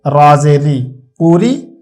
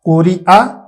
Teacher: را کے نیچے زیر ہو تو اس کو باریک پڑھتے ہیں